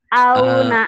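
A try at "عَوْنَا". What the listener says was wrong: Ain. Auna. A-nya belum keluar tuh. Auna. Gitu.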